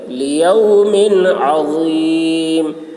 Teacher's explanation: میم میں اظہار ہوگا، تنوین کو ظاہر کر کے بلا غنہ کے جلد پڑھیں گے. لیوم عظیم، عین حلق سے، غا کی آواز موٹی ہوگی.